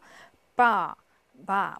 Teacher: 뒤에서 나는 이 아 발음은요. 아 하고 조금 더 길게 얘기를 해주는 건데요.